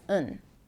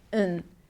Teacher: So on can be pronounced as un. In can be pronounced as un. So it's practically the same sound. Your brain hears the same sound, un, for two different words, on and in. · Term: reductions